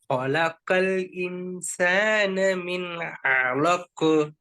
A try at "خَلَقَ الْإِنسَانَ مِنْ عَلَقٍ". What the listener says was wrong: இலக்கு காஃப்ல நல்லா விடுங்க. அலக்கு خلق الإنسان من علق. விளங்குதா சவுண்ட்? خلق الإنسان من علق.